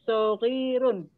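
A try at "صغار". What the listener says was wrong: Sigorun. Ya, kalau sogirun pakai ya, sogirun. Kalau ini sigorun.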